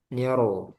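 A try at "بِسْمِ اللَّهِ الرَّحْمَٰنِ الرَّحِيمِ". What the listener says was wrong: Coba tebalkan lagi rnya.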